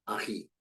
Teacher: El tono predominante está en la última sílaba, que es ji. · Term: palabras agudas